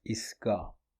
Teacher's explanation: the word for stop or station is istgah, then it becomes isga. So both ta and ha are dropped.